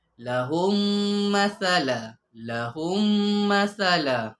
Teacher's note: Dia masukkan mim yang pertama ni masuk pada mim yang kedua. Memasukkan bunyi mim ke dalam mim yang berbaris. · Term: idgham syafawi